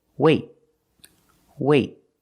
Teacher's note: have a vowel then we do a stop T that means you put your tongue up in the T position but you don't release